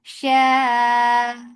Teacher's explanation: Mad muttasil wajib, make it 4 counts long. You can make it 4 or 5 counts long.